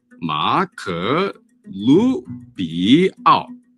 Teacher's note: Emphasis on the Lu. Note the rising tone.